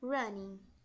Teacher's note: A gente não pronuncia o som do G. A gente pronuncia o ING sem o som do G, apenas até a letra N.